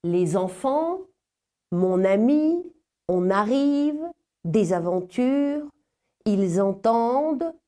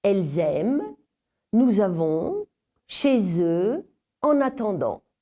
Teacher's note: un son nouveau se glisse entre les deux mots, entre la consonne finale et la voyelle initiale suivante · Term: la liaison